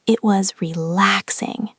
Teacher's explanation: You need to go up on the adjective.